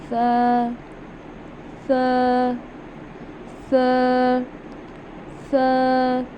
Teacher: ज़ुबान का जो सिरा है, जो हमारी ज़ुबान का सिरा है, नोक है, उसको हम ऊपर के दांतों के, जो हमारे ऊपर वाले फ्रंट 2 दांत हैं, उनके अंदरूनी किनारों से हम अदा करेंगे। हम अपनी ज़ुबान को ऊपर वाले 2 दांतों के अंदरूनी किनारों से टच करेंगे